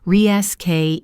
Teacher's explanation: In American English, it's pronounced reschedule. The stress is on the second syllable, reschejool.